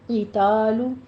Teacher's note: قی کی آواز جو ہے یہ پر پڑھتے ہوئے کسرہ کی آواز باریک رکھیں گے ، قتال نہیں کہیں گے، قتال، تولو میں لام کے پر